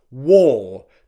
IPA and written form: wɔː (War)